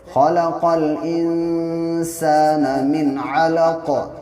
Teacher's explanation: انسانہ پہ یہاں پہ اخفا ہوگا کیونکہ نون ساکن کے بعد سین ہے، اور سین حروف اخفا کے 15 حرفوں میں سے ہے، اس لیے ناک میں آواز کو تھوڑی دیر روکیں گے